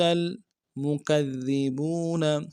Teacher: دال کے اوپر تشدید زور دیں گے، اور دال کو باریک ادا کریں گے · مکذبون میں کاف کو دال کے ساتھ ملانا ہے ، دال کے اوپر تشدید زور دیں گے، اور دال کو